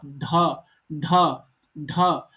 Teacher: ढ बोलोगे तो ऊपर वाला जो मूर्धन्य है वो जीभ को टच करता है